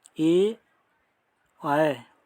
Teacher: ए आय का उच्चारण स्थान कंठ और कंठ तालु होता है। देखिए ए आय ये दोनों आ और ई से मिलकर बनते हैं।